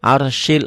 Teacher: rnya tebal karena sebelum ro mati baris di atas